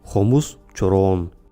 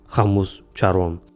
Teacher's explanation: В отличие от русского, в якутском нет редукции гласного, то есть гласные в любом положении произносятся четко. Хомус, чорон, а не хамус, чарон.